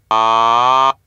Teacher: the narrow part is made in this pharyngeal cavity, and the oral cavity is widely open. As a result, the vocal tract configuration is exactly for the vowel ah.